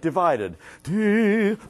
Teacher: you have a little crescendo on the first syllable, a stress on the second, and a diminuendo for the third.